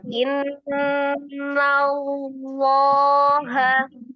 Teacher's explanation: Lamnya kan ditebalkan itu kan lam jallahnya tebal ya.